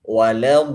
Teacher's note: di sini matnya harus 6 harakat, tidak boleh kurang. Kalau kurang, kesalahannya di sini menjadi lahan khofi.